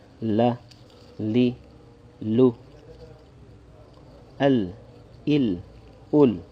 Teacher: the lam is where the tongue is more forward, right behind the teeth